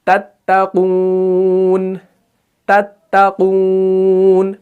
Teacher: بالکل باریک، یہ طا نہیں لگنا چاہیے